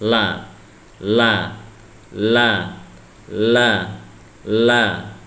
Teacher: La ini gampang sekali karena ujung lidah ada di bagian gusi atas.